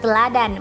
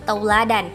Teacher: kata teladan menjadi tauladan, vokal e menjadi au. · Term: diftongisasi